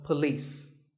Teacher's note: it's p and leas with the stress on leas